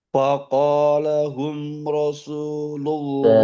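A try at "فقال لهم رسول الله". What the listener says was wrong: Faqalalahum. La-nya ada dua.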